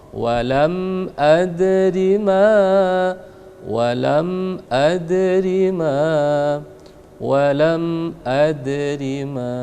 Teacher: ada dal yang sukun atau mati, maka kita pantulkan dengan disebut dengan istilah qalqalah. Karena dia di pertengahan maka disebut qalqalah sughra.